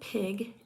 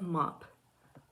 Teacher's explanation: Unvoiced or voiceless sounds are produced without vocal fold vibration because air moves past still vocal folds. When I say p, I do not feel any vibrations in my throat. The sound for P is P, as in the beginning of pig and the end of mop. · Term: unvoiced bilabial stop consonant